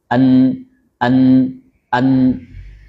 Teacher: Makhraj huruf nun keluar dari ujung lidah yang didekatkan dengan langit-langit di antara makhraj lam dan ro